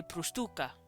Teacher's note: I would emphasize the tu just a little because it's the next to last syllable